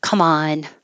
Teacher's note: you're going to emphasize the on and it'll connect